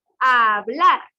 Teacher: Hablar lleva la mayor fuerza de voz en la última sílaba, sería una aguda.